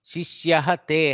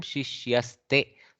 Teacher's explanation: So the visarga has changed to sakara there. Okay, and joined the takara in a compound.